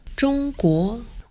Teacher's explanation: In Mandarin, it's pronounced 中国 with a high flat tone and a rising tone.